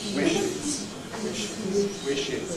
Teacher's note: Because it’s [ʃ], we add [ɪz], ‘he wishes [ˈwɪʃɪz]’